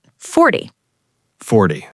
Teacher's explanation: And 40 drops the u sound. It's not 40 with a big ooh. Keep it short.